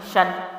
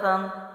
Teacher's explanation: شین دو زبر شن، ٹھیک ہے، شین اس کی آواز وہیں رہے گی، تنوین کو میں نے نون جزم میں بدلا